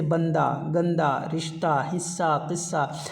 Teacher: हाय मुख्तफ़ी में हा की कोई आवाज़ ही नहीं होती